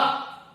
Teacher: इसमें यानी मुंह खुला रहेगा, कंठ से आएगा उसका उच्चारण।